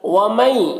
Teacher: وَمَن، یہاں پر نون ساکن کے بعد یا ہے حروف یومن میں سے، تو نون کو یا سے ملا کر غنہ کے ساتھ پڑھیں گے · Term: ادغام ناقص